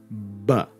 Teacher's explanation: B is voiced, but not aspirated. So the voice box vibrates, but no puff of air.